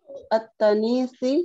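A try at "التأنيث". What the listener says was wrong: At-ta'nif ada hamzanya. At-ta'nifi.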